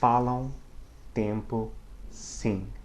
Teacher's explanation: So if the M's pronounced, it's barely or not at all, but it does nasalize the preceding vowel.